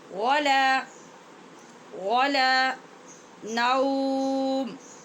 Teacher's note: سینۃ ولا نوم، ولا واو کے لیے ہونٹ گول اور لام باریک